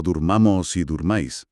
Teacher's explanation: el acento se va al final de la palabra y en lugar de relajar a la o de dormir se transforma en una u